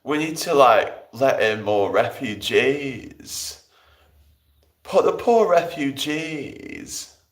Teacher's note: in order to do Diane Abbott, you've got to add a bit of vocal fry